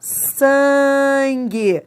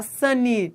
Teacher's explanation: Esse N nasaliza o A, não é?